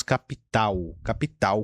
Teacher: A palavra L é que pega na língua portuguesa, porque no Brasil nós falamos capital, capital com U no final